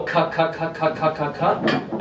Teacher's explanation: you'll notice the back of your tongue hits the roof of your mouth